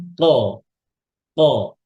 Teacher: জিহ্বার যে গোড়া তার বরাবর উপরে ওখানে যে নরম জায়গাটা ওখানে আমাদের জিহ্বার গোড়াটা লাগবে উপরে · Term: কফ